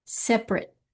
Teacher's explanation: Emphasis on this se first syllable separate.